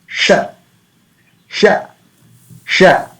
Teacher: So while pronouncing this sh, mouth position must be like a smiling, and uh, back portion of the tongue will touch the palate. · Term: palatal sha